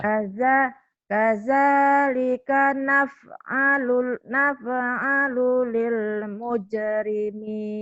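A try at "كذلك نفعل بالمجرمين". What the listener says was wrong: Bukan lil tapi ini bil. Bil mujrimin.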